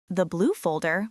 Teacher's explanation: If your voice goes down, it sounds like a statement. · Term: intonation